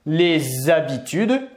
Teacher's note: Je peux faire également les liaisons. Les habitudes, toujours avec le son Z.